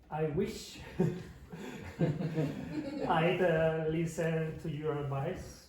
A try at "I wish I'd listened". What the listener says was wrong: Okay, so if you don't pronounce that strong consonant at the end, the teacher doesn't know if the Spanish speaker has bad grammar or the pronunciation is wrong. So it's I wish I'd listened or listen. Okay, you have to be careful about it.